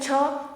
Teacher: छ का उच्चारण करते समय भी हवा तालु के पास टकरा रही है और बाहर निकल रही है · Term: तालव्य ध्वनियाँ